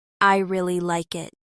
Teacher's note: In American English, some words get strong stress and others are softer. For example, in I really like it, the stress is on really and like.